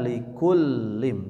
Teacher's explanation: lam bertasydid seperti biasa sempurnakan ditekan likullim jadi lamnya ada du du dua yang pertama sukun yang kedua berharakat likullim huruf mim di sukunkan tidak boleh mantu likullim likullim likullim riim ada baru men mendengungnya mim bertasydid Um ya yauma tidak boleh dibaca ya.